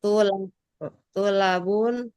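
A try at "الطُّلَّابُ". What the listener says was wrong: Atul labu. Nggak pakai tanwin Atul labu zaru.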